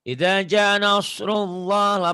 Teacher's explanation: Mad asli, lafaz Allahnya tadi tafkhim tebel ya. Tafkhim dibaca tebel karena ya tadi sebelum lafaz Allah baris di atas.